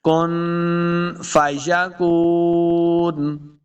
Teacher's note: کاف پیش واو کو، واو مد ہے، اس کو دو حرکات لمبا کر کے پڑھنا ہے۔ آخر پہ ہم وقف کر دیں گے، کن فیکون۔